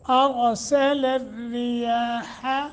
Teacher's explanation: را باریک یا کے اوپر کھڑی زبر ہے اس کو لمبا کریں گے